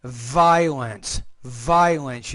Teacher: you need to put more vibration on the V